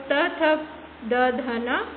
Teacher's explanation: त वर्ग जो त, थ, द, ध, न इनको हम दंत और जीभ की सहायता से उच्चारित करते हैं।